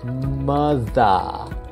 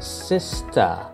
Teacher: The third rule is that ER sounds become AH sounds.